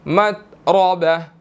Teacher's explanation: را جو ہے وہ مشدد ہے, اس کے اوپر زبر ہے, تو ہم نے یہاں پر اس کو موٹا ادا کرنا ہے